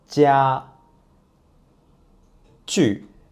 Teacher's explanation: G is an unaspirated consonant and the vocal cords do not vibrate. And to make the G sound, you need to put the tip of the tongue against the back of lower teeth, like that.